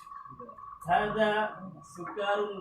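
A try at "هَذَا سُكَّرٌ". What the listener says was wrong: Di kafnya itu ada tasdidnya. Hadza sukkarun. Coba diulangi lagi. Hadza sukkarun wa dzalika labanun. Jangan sukarun. Enggak enak. Hadza sukkarun wa dzalika labanun.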